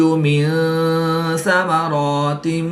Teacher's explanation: نون ساکن کے بعد سا حروف اخفا میں سے ہے تو یہاں پر اخفا ہوگا، یعنی غنہ زمانی کر کے پڑھیں گے۔